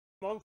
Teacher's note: low back, relatively unrounded vowels in words like government, had, and a rounded one in month, something like oh.